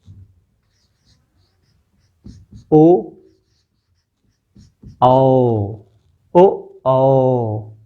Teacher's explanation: ऊ सीधे ओष्ठ से था, लेकिन ओ कंठ से आवाज कर रहे हैं और साथ में ओष्ठ का भी प्रयोग कर रहे हैं।